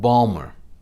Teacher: if you lived in baltimore for many generations you dropped the ti and you called it balmer